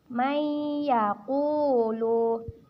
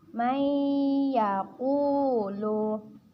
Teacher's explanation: Maka hukum bacaannya yaitu idgham bi gunnah. Cara membacanya yaitu dengan ditahan, dengan didengungkan 2 harkat.